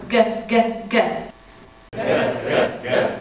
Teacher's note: But if you've always got a buzz within the beautiful opening, then you'll always be set up to easily float between your whole range. The middle back of the tongue will pulse towards the velum, and it creates the G sound.